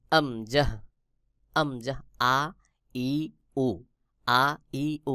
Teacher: গলার শুরু থেকে আমজাহ উচ্চারণ হয়